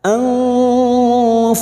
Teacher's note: mim sukun bertemu Hamzah mim sukun dibaca jelas tanpa mendengung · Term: idhar syafawi